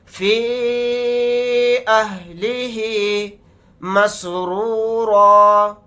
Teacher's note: اس مد کو ہم 3 الف کی مقدار کھینچ کر پڑھیں گے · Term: مد منفصل